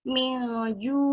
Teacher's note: nun sukun bertemu dengan ja, jadi mil samar. Biasanya seperti terdengar eng, milju, harus benar-benar samarnya. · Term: ikhfa hakiki